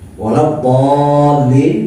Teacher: Misalnya mad tabi'i diikuti huruf yang bertasydid. Walau dhalin itu 6 harakat, diikuti lam yang bertasydid. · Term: mad lazim